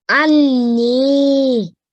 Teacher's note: this is a Ghunnah letter as well. So we needed a 2-second nasal sound.